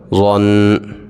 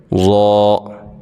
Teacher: جب آپ نے ضاد کو ادا کرنا ہے تو اپنی زبان کی جو نوک ہے وہ سامنے دانتوں کے ساتھ نہیں لگانی، بلکہ آپ نے اپنی جو زبان کی سائیڈ ہوتی ہے نا، آپ نے اوپر کی داڑھوں کے ساتھ لگانی ہے. ٹھیک ہے، تو پھر وہاں سے ضاد صحیح طریقے سے ادا ہوگا.